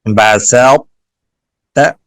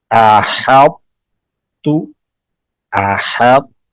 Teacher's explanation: پہلے طا کو موٹا کریں گے پھر تا ادا کریں گے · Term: ادغام متجانسین ناقص